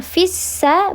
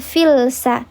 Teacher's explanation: Namanya adalah lam syamsi karena ada lam yang menghadapi huruf sin. Ada lam menghadapi huruf sin ditandai dengan ada tasydid di atas huruf sin dileburkan fissa bukan filsa